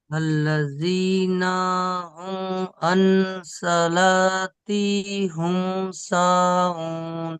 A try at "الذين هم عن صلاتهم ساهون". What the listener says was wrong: এই সলাতি হুম হয়ে যাচ্ছে, সলাতি হিম হবে, হ্যাঁ, সলাতি হিম সাহুন।